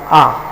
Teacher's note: जो बड़ा आ है ये हमारा कंठ से बोला जाता है